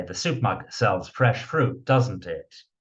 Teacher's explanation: So the intonation falls when you're inviting agreement. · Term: falling intonation